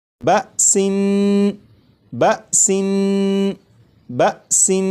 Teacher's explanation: نون کو پڑھتے ہوئے زبان تالو سے لگا کر پڑھوں گا